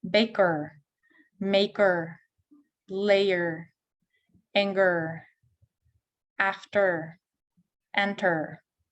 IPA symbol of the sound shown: ər